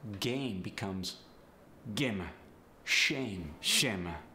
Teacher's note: I've heard the long a turn into a short e when listening to someone with a Chinese accent